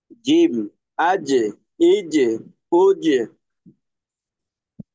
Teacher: একটু ঝিরঝির আওয়াজ, বাতাসের মিশ্রণ অল্প পরিমাণে